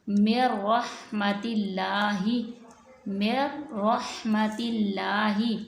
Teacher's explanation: نون ساکن کے بعد اگر را آ جائے گی تو ہم یہاں پہ بھی نون ساکن کو را میں مدغم کر دیں گے